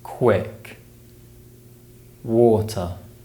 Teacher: the W sound is produced with strongly rounded lips